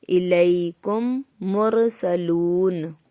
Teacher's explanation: Number 1، ادغام شفوی۔ میم ساکن کے بعد میم آئے تو میم کو میم سے ملا کر غنہ کے ساتھ پڑھا جائے گا۔